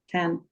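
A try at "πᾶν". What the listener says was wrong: Not tan. It's the same letter as starts the other ones. So if it's pass, passa, what was the last one needs to be? Sorry, it sounded like you said tan. But no, you may not have done. It might just be yeah, it's a P. Sorry, it sounded a bit like that.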